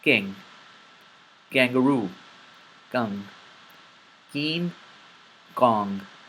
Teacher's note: notice when I pronounced these letters I did not exhale I didn't say king I said King I didn't say kangaroo